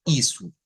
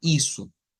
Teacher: las os cuando van al final de las palabras o de las sílabas siempre van a haber cambios de o por u o sea se escribe una o pero suena una u Miren